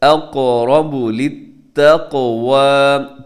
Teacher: اقرب قاف موٹا اور پلس قلقلہ بھی ہوگا، آگے را جو ہے وہ موٹا پڑا جائے گا. اقرب للتقوى، تقو قاف قلقلہ ہو رہا ہے کیونکہ قاف ساکن ہے.